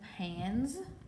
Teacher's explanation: If suffix S follows a voiced consonant, the S is voiced, Z, as in pans.